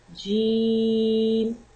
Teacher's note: The letter of Jim pronounced from center of the tongue and middle of the palate.